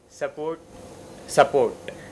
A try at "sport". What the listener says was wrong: Yeah, they don't pronounce sport as sport. They pronounce it as support.